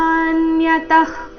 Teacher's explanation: ವಿಸರ್ಗದ ಉಚ್ಚಾರಣೆ ಇಲ್ಲಿ ಅರ್ಧ ಕ ರೀತಿ